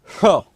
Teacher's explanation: तो जिह्वा क्या करेगी, तालु की तरफ जाएगी। तो तालु की तरफ जाएगी तो इसको कैसे बोलेंगे, श।